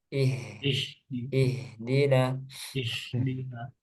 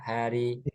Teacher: Kemudian nanti haknya ihdina bersih dari pengaruh lidah.